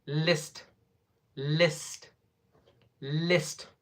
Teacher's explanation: we have l sound, then after that one e sound for short duration, then s sound, then t sound